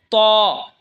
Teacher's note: ত জিহ্বার আগা সামনের ওপরের দুই দাঁতের আগার সঙ্গে লাগায় উচ্চারণ হবে ত